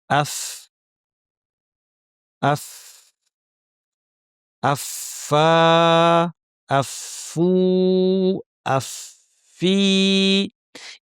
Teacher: উপরের পাটির দাঁতের শীর্ষ আমরা ঠোঁটের একটু ভেতরের দিকে লাগিয়ে ফা উচ্চারণ করি।